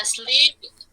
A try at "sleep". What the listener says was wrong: just be careful it is not as sleep it is sleep okay we don't say E before the sound sleep